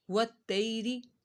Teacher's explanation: وتی رو زیر ری وتیری یہاں پہ یالین ہو رہا ہے یا ساکن سے پہلے زبر آ رہا ہے تو اس وجہ سے یہاں پر اس کو بغیر کھینچے پڑھنا ہے